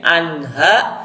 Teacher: Anha, nun mati menghadapi ha atau alif ha kha ain ghin, hukumnya adalah idhar, jelas berbunyi n. Anha, tapi tidak boleh ditahan.